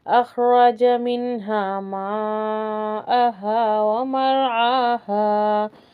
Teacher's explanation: रॉ को थोड़ा सा मोटा करेंगे क्योंकि उससे पहले क्या है, ज़बर है